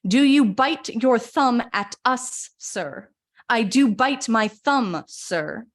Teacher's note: t's you know yes bite you have those t's and S's we also have those do you and bite so we have some strong D's and B's exploding as well